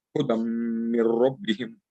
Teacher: there is a tanween there on the hudan. That's why it will get idgham with mim.